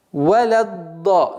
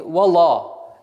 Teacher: Лям всегда мягкая, она никогда ла не будет. С твердым а не будет, она всегда мягкая.